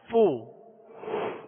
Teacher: اس کی مخرج فا کا اوپر کے دونوں دانتوں کے کنارے اور نچلے ہونٹ کا تر حصہ، یہ اس کا مخرج ہے